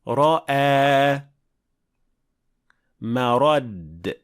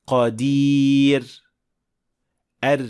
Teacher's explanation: Eng ko'p uchraydigan yug'on o'qiladigan roda tilning orqa qismi ko'tariladi. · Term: Tafhim, yo'g'on o'qiladigan roda